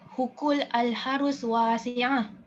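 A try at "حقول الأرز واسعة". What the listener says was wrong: Bukan ha. Alif. Hukul al-a.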